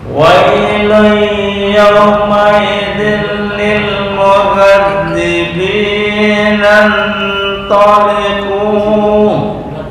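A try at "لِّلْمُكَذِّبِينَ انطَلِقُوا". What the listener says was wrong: Kalau berhenti ini hanya 2 harokat ya, nggak bisa lebih. Mukadzibina taliqu, titik, hanya 2 harokat. Lil mukadzibina taliqu.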